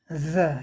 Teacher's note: इसमें कंपन होता है संघोष